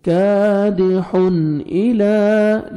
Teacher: کادحن، ہا کو کلیئر اپنے مخرج سے ادا کریں گے، اور تنوین دیکھیں 2 زبر کے بعد حروف حلقی میں سے حمزہ آ رہا ہے، یہاں پہ آپ نے اظہار کرنا ہے